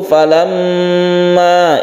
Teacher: Falamma, ini ada gunnah musyaddadah, mim yang bertasydid kita gunakan. Falamma ini kita dengungkan karena gunnah musyaddadah. Gunnah musyaddadah itu adalah mim yang bertasydid atau nun yang bertasydid.